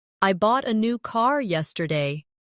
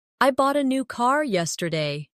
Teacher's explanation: The stressed words are bought, new, and car. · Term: sentence stress